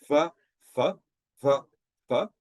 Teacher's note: you can feel a vibration when you do the v, but you can't feel a vibration when it's the f